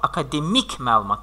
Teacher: Deməli, burada vurğu sona düşdü